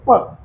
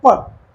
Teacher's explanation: जब आप इनको बोलेंगे तो आपके होठ दोनों आपस में टकराएंगे। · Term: ओष्ठ्य